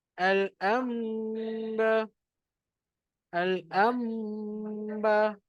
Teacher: Kita kena TMD. Tukarkan nun tu kepada mim. Lepas tu kita dengungkan.